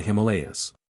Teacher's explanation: The word Himalaya has been accented on the second syllable wherever it occurs. This accent is historically correct, and has some foothold in English usage.